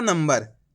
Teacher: ना के ऊपर अनुस्वार की मात्रा लगी हुई, उसके बाद वाला अक्षर कौन सा है, बा, ये रहा बा, तो आधा माँ पढ़ दिया।